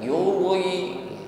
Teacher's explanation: Ri ra yang baris bawah atau baris kasrah bunyi ri, maka ra-nya terqiq ya, diringankan, bukan ditebalkan. Yuri, jadi ra baris kasrah diringankan bunyinya